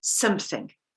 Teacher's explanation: when we have something, then we emphasize the some. We make a point of it. We say something.